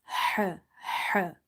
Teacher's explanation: Ain and ha have same makhraj, same exit point, or you can say place of pronunciation. Both are from the middle of the throat, and the sound is quite different than alif or hamza. · And similarly, if this ha is not pronounced from the middle of the throat, it will end up mixing it with the other ha, simple ha.